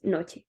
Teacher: La voyelle O se prononce comme une voyelle centrale semi-fermée, O, et similaire à la prononciation du O en anglais standard.